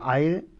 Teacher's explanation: اس میں آ اور اے دو واول استعمال ہوئے ہیں۔ آ فرسٹ پلیس پا والا واول ہے، اور سیکنڈ پلیس مے والا واول اے۔ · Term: ڈفتھانگ